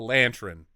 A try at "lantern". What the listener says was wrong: Lantran. Well, look at the way it's spelled. Look at the way it's spelled. There's no A.